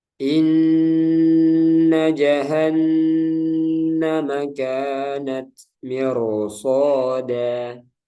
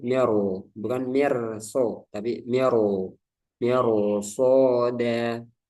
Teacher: Jadi patokannya di sini huruf isti'la. Meskipun ada kasroh sebelumnya, dia dibaca tebal. Karena ada huruf isti'la setelahnya yang berharkat doma atau fathah.